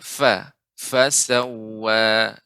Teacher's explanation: huruf sifat fa adalah hamas, mengalirnya udara, jadi lebih diperbanyak lagi ya fa